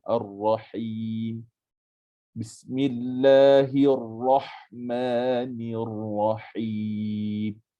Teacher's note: Kena dengar jelas bunyi ha tu. Kita sempitkan laluan ha itu, kena bunyi jelas. Kena bezakan ha dengan ha. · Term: ha pedas